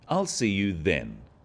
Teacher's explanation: notice how the stress is on the word then to confirm that the time is definite